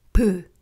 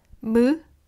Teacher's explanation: 'ㅂ' est la même forme de la bouche que 'ㅁ' Sauf que l’air sort de la bouche